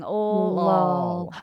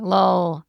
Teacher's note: The tongue is lower, right? So you go from a tongue tip L to a tongue back L. So So the first one's a light L and the second one's a dark L.